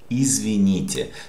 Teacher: t, soft t, because after we have je